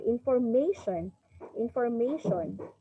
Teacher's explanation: So the word information is stressed on the third syllable.